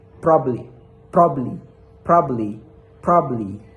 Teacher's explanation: so the second syllable is deleted. So the B in the last se in the last word is that deleted.